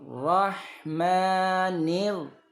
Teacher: Penekanannya ini di ro ya, ro tasdid ini.